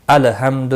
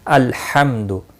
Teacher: जिस तरह से आप नमाज में पढ़ते हैं, सूरतुल फातिहा के अंदर ये अल्फाज मौजूद हैं, अल्हम्दु, अलहम्दु नहीं पढ़ना है, अल्हम्दु। लाम को हिलाना नहीं यानी कलकला नहीं करना है।